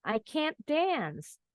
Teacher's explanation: Kalau tidak bisa huruf A-nya bunyinya lebih panjang. Can. T-nya nggak kedengeran, nggak perlu dibunyiin can't.